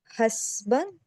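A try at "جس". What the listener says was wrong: सरमाया हस्ब नहीं है, अच्छा ठीक है, थोड़ा जहाँ डॉट इधर है तो उसको पढ़ेंगे जिम के, जिम पढ़ेंगे जिस।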